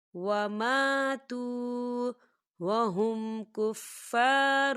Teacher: خالی الف سے پہلے زبر ہے تو یہاں پر الف مدہ ہو رہا ہے، تو ہم اسے دو حرکت کے برابر کھینچ کے پڑھیں گے